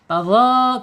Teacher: Ujung lidah ya, menyentuh ujung gigi seri ya. Keluarkan sedikit.